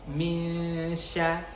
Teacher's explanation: Jadi di ayat ini yang harus kita pertama perhatikan adalah huruf ikhfa ketika nun sukun, kemudian setelahnya diikuti sya, huruf shin ya. Huruf shin itu memiliki sifat tafashishi, sehingga harus benar-benar kita jelaskan seperti kayak ada sh-nya begitu.